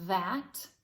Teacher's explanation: it's like making the v sound, but again with the tongue between the teeth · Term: voiced th